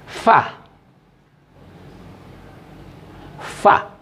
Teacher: fa itu adalah keluarnya di bibir bagian dalam bertemu dengan gigi bagian atas, lalu keluarlah sifatnya huruf, keluar angin yang dikenal dengan hamas